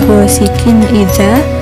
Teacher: ada huruf qaf yang berharakat kasrah tanwin bertemu dengan alif jadi dibaca secara jelas hal tersebut disebut juga izhar halqi dibaca secara jelas sama saja